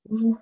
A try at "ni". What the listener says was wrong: Ni. Ça monte. Ni, ce n'est pas ni.